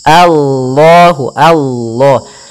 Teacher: Allahu Allah ya a-nya tipis kemudian lafal Allahnya tebal di sini lafzul jalah lam tebal maka kita namakan dengan lam tafhim